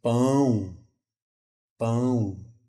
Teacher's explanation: mandar ar não só pela boca mas também ar pelo nariz · Mas aí eu tenho que palavras que eu vou precisar nasalizar e não terei o N nem o M. Como pão, pão. Eu percebo que sai um ar pelo meu nariz. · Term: nasalização